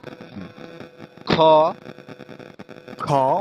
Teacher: মহাপ্রাণ উচ্চারিত হবে মুখ থেকে বাতাস বের হবে